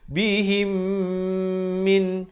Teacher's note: Datang selepasnya huruf mim, jangan lupa bacalah dengan dengung 2 harakat. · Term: Idgham mislain